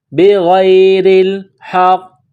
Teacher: غین گلے سے بلغم نکالنے کی طرح اس کو پڑھتے ہیں، غین کو موٹا کرنا ہے · را کے نیچے زیر ہے، را کو باریک کرنا ہے